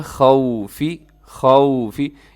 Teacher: بِشَيْءٍ مِّنَ الْخَوْفِ، مِّنَ الْخَوْفِ، خا گرین کلر میں ہے، خا ان حروف میں شامل ہے جن کو ہمیشہ موٹا پڑھا جاتا ہے، تو اس کو موٹا رکھیے گا، اور آگے واو لین ہے، اسے یہاں پہ ہونٹ گول کیجیے گا، خوفی، خوفی، اسے خوف نہیں کرنا آپ نے۔